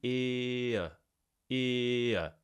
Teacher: Look at my face, it's hardly moving. I'm starting with my tongue at the front of the mouth, E, just behind the top teeth. Mouth isn't really very open, ear, ear. So it's a bit like you're smiling and then you lose interest.